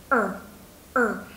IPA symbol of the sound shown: 3: